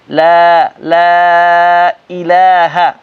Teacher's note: لا کھینچنا بھی ہے اور پتلا بھی کرنا ہے